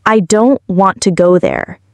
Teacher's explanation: Hear how the stress falls on don't and go? The rest, I, to, and there, are said faster and softer. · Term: rhythm and stress